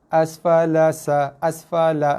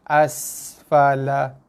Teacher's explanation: Tak sempat bunyi desir. Zahirkan bunyi desiran pada sin bila dia berbaris mati. Bila sin baris mati, dia datang bunyi ataupun datang sifat desiran pada sin tu.